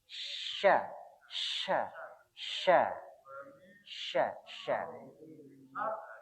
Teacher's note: Untuk syin itu di tengah-tengah. Jadi lidahnya kita ini menempel di langit-langit.